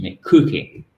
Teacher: vous avez naturellement l'accent tonique sur la première syllabe